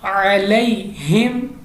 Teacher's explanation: next हमारे पास है अलैहिम, क्योंकि यालीन की वजह से या साकिन से पहले ज़बर है, यालीन होगा तो यालीन की वजह से हमने इसको जल्दी पढ़ा है